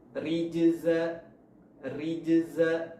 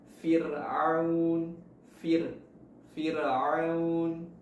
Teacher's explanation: Huruf ra dibaca tipis berarti pangkal lidahnya tidak naik